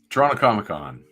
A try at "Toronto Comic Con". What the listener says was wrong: For the non-Canadians, Toronto is Toronto Comic Con. You said that so fast and so Torontonian. It's a Toronto Comic Con. Every syllable in there.